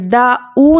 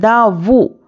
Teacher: دا او نہیں بولنا ہے، دا وو، کیونکہ واو الٹا پیش وو ہوتا ہے، او نہیں۔ اگر او بول دیں گے تو حمزہ ہو جائے گا